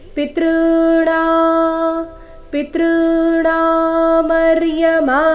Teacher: ಪಿ ಮೇಲೆ ಆಘಾತ ಕೊಡಬಾರದು ಪಿತೃ ಈ ರೀತಿ ಹೇಳಬಾರದು